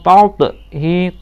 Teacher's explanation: to-nya qalqalah sugro dipantulkan